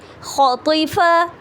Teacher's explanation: خو ہیوی، تو ہیوی، فا لائٹ